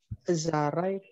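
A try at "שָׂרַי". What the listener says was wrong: Ya, Sarai. S biasa ini.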